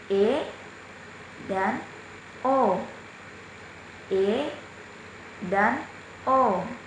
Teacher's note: vokal madya atau tengah, yang dibentuk apabila rahang bawah menjauh sedikit dari rahang atas